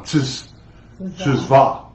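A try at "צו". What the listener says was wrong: No, not Tzva. Tzav. The V is at the end. It's spelled T Z A V.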